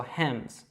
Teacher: you're pronouncing that H, and that S is actually pronounced as a Z, so Hems.